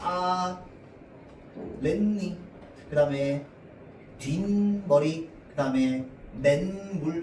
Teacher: 뒷말의 첫 소리 니은 미음 앞에서 니은 소리가 더 나는 거